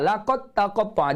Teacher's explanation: idgham mutajanisain, iaitu da dengan ta satu makhraj tetapi sifatnya berbeza. Jadi hilangkan huruf da terus masuk huruf ta.